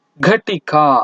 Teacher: ಘಟಿಕ ಅನ್ನೋದಕ್ಕೆ ಹೆಚ್ಚು ಉಸಿರು ನಮಗೆ ಬೇಕಾಗುವುದು ಉಂಟು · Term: ಮಹಾಪ್ರಾಣ ಅಕ್ಷರಗಳು